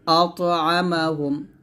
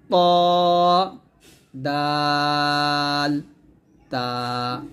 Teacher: জিহ্বার আগা সামনের উপরে দুই দাঁতের গোড়ার সঙ্গে লাগিয়ে ত দাল তা উচ্চারণ করতে হবে। জিহ্বার আগাটা এই যে 1 নম্বর দুইটা দাঁত আছে, বড় দাঁত, এই দুইটা বড় দাঁতের গোড়ার সঙ্গে লাগিয়ে আমরা ত দাল তা উচ্চারণ করব।